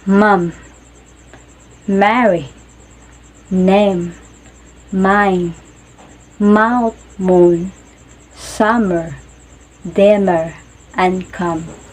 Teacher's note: is made by pressing the lips together lightly and vibrating the vocal cords air mobs through the nose words that use the M NASA